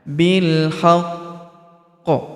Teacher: Kemudian kita berhenti di sini karena terdapat tanda berhenti atau tanda waqaf, yaitu waqaf qola. Maka huruf qi kita tahan dan tekan, dan juga dia disukunkan ya, karena kita berhenti di sini ya. Karena kita berhenti di sini maka huruf qi ini kita sukunkan, sehingga setelah kita tahan dan kita tekan lalu kita pantulkan.